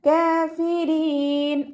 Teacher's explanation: കാഫിരീൻ റോ ലൈറ്റാണ്, കെസ്ര ആയതുകൊണ്ട് റോ light ആക്കിയിട്ട് ഉച്ചരിക്കുക